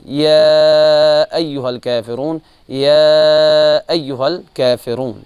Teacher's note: مد منفصل کو 2 سے 4 حرکات تک کھینچنا چاہیے